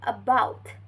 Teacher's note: is uttered by elevating the tongue in the middle position and the central part of the tongue is used to articulate this vowels and the leaf shape making this vowels is unrounded natural.